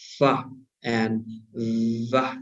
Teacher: We have the lower lip, right, raised toward the upper front teeth. Nó nâng lên chạm vào cái hàm răng cửa ở bên trên, right?